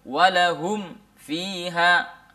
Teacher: seakan-akan mim itu tidak terbaca. Dia langsung masuk di huruf fa karena makhrajnya mim dengan fa hampir berdekatan. Iya, atau hampir sama makhrajnya. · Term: samar